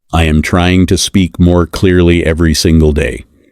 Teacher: give a little more stress to the words trying. Speak clearly and day.